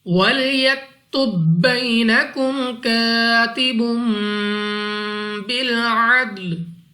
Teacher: या साकिन से पहले हर्फ पर जबर, तो या लीन है, बगैर खींचे पढ़ेंगे यानी जल्दी से। नेक्स्ट अलिफ से पहले जबर अलिफ मद्दा 2 सेकंड तक लंबा करना है, बा के ऊपर 2 पेश और उसके बाद है बा और उसके साथ छोटा सा मीम, तो यहाँ पर हमारे पास इकलाब का कायदा है और यहाँ पर भी हमने गुन्ना करना होगा।